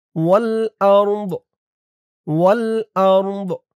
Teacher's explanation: ওয়াও লাম জবর ওয়াল, হামজা র জবর আউর, ওয়াল আউর, দজের দি, এই জিম চিহ্নতে থামার কারণে দদের নিচে জেরটা সাকিন হয়ে যাবে